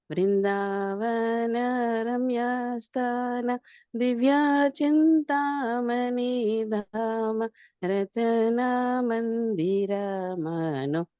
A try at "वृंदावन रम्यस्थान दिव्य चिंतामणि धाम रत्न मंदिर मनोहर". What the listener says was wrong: బాగా పాడారు.